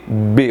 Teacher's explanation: é uma vibração nas cordas vocais o presente B Oi Bia você junta os lábios existe um impedimento e depois você explode